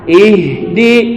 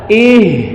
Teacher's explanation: ha besar dari tenggorokan merambat ke dada Ih jangan dibaca ih ya tapi ih di ya Ih di